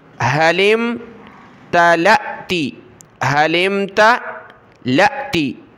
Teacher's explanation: لام کو حمزہ ساکنہ کے ساتھ ملائیں گے، جھٹکا دے کر پڑھیں گے، لام حمزہ زبر ل، حلم تا ل، تا زیر تی، حلم تلأتی، حلم تلأتی، وتقول هل من مزید، میم کو میم کے ساتھ ملایا، من مزید۔